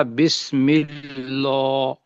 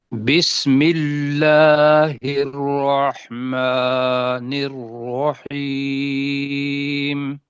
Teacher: میم کے نیچے چونکہ زیر ہے نا تو اللہ کو پتلا بنائیں گے